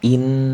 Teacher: in ini itu dibaca berdengung ya, dibaca hunah karena ada nun bertasjid